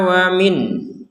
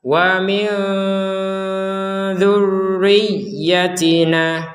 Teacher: berhentinya di min maka dibaca dengan jelas. Karena tidak digabungkan atau tidak dipertemukan nun sukun dengan dzal.